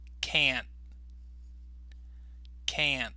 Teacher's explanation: notice I didn't finish the T with this particular pronunciation, so I kind of stopped on the T. But you can hear this part of the word more clearly.